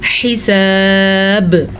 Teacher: را باریک ہے، را کے نیچے زیر ہے تو را باریک پڑھی جائے گی. آیت پہ ہم نے وقف کر لیا تو با ساکن ہو گئی تو کلکلا ہوگا